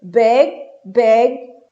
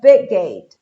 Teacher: Big. Esse I é aberto, tem um som de E com circunflexo.